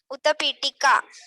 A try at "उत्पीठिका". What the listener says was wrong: अरे गलत पढ़ दिया आपने फिर से। उत्पीठिका बोलिए, ठा बोलिए, टा आप बोल दी ना, उत्पीठिका बोल दिया। उत्पीठिका। हाँ ठा बोलते, ठा, ठप्पा बोलो एक बार।